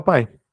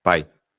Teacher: ela começa do Forte e cai então ela decresce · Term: ditongo decrescente